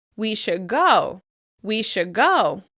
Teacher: we'll change the /d/ sound into the /g/ sound so that it keeps flowing into the verb that follows